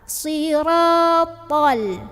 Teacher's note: Ini to tuh pangkal lidahnya naikin. To tebal. Siratal. To bukan sirotol.